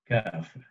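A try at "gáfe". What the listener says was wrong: A little bit longer A, kaffe. And just one F.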